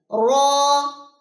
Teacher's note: اس میں تکرار نہیں ہوتی اتنی زیادہ